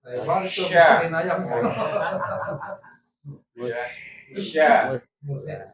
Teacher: Kalau shin tengah lidah menyentuh langit-langit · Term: sifat tafashi